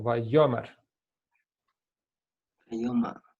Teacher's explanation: The stress on the first syllable.